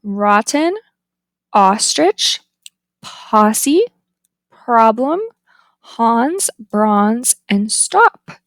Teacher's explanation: the tongue height is low, back, the lips are unrounded, and it is tense.